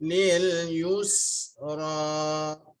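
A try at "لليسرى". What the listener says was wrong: Lil yusra. yusra. Lil yusra.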